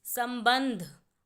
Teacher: संबंध में दो बार एक बार म की आवाज़ आ रही है, एक बार न की, तो सम, तो स के बाद म की आवाज़ है, इसीलिए स पर बिंदी, और बंध, ब के बाद न की आवाज़ है, इसीलिए ब पर बिंदी और शब्द बना संबंध।